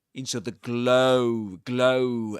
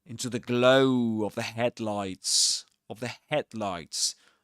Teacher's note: usually in English these words like of the are not accented. That is to say, they don't carry the main the main stress.